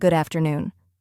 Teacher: Most people don't say good afternoon with a pause. The D in good connects to afternoon, so it sounds like good afternoon. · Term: connected speech